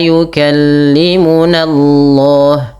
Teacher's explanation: Lafal Allah tebalkan karena di dalam tafhim yang di mana sebelum lafal Allah itu ada fathah.